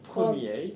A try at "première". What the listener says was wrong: When they're feminine, première, can you hear how that's longer?